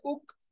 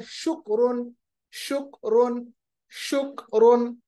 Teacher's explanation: कैफ को थोड़ा सा आगे पढ़ते हैं, जबान की जड़, मगर ऊपर जो हार्ड वाला हमारे पास प्लेट है उसके साथ मिलाते हैं। आवाज बारीक रखते हैं, इसको मोटा नहीं रखते।